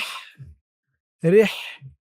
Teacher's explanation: হার আওয়াজটা গলার ভিতর থেকে চিকুন হয়ে বের হবে।